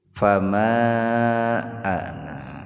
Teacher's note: Jadi dibacanya luar biasa gitu Pak, panjangnya luar biasa, tidak tobi'i, tidak biasa, tapi luar biasa, lebih dari dua ketukan, bisa 4, bisa 6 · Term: munfasil